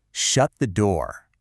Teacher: That drop at the end. That falling sound signals a command. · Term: falling tone